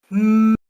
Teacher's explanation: And then you got the nasal where the mouth is closed off in some way and all the airflow gets redirected to the nose